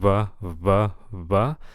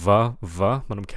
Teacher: putting your top teeth on your bottom lip